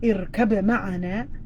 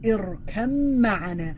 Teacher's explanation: you're going to take out the ba, and you're going to press on the meme.